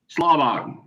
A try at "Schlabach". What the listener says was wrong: No K on the end of it.